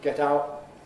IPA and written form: ˈget ˈaʊʔ (get out)